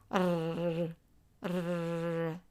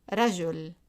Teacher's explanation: it's a rolled and alveolar R